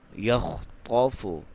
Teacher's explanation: یکاد البرق یخطف، خا کو کلیئر کریں گے، قاف کو موٹا پڑھیں گے